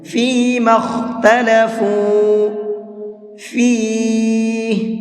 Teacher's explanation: بین الناس فیما اختلفوا فیہ، فیما، میم کو ڈائریکٹ خا میں ملائیں گے، اور بیچ میں جو دو الف ہیں ان دونوں الف کو نہیں پڑھا جائے گا، اور خا کو منہ بھر کے پڑھیں گے